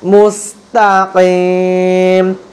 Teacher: ইহদিনাস সিরাতাল লাম জবর তল ইহদিনাস সিরাতাল মিম সিন পেশ মুস ইহদিনাস সিরাতাল মুস্তাকিম তাকিম। কফ হচ্ছে কলকলার শব্দ, এই জন্য ধাক্কা দিয়ে বলবেন